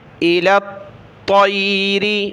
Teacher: اس کو جمع کر سختی کے ساتھ پڑھنا ہے، الی الطیر، سخت طا کو کرنا ہے، لام کو سختی کے ساتھ نہیں پڑھنا · طا کو موٹا پڑھیں گے